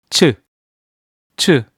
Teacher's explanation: You have to blow air out stronger than 지읒 to make the 치읓 sound.